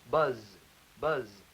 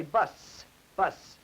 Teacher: in bus, you will notice there is no buzzing on that S sound in bus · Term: voiceless sound